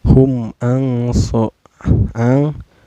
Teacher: Hum ang so ang ini dihukumi ikhfa ya, karena ada nun sukun bertemu dengan huruf ikhfa yaitu sod ya. Cara bacanya samar sambil berdengung.